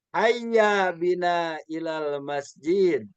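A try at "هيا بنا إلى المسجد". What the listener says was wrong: Good. Mumtaz. Bagus.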